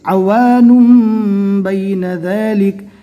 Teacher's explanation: یہاں پر تنوین کے بعد اقلاب کا ایک حرف با آ گیا، لہٰذا تنوین کو میم سے بدل کر پڑھنا ہے